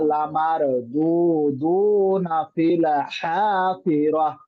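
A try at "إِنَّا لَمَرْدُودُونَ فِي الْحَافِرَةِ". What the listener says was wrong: লামর, একটু মোটা করে ফেলবেন।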